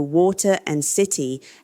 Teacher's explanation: American English uses T-flapping, converting T to a tap sound between vowels, so water and city have that characteristic bouncing rhythm.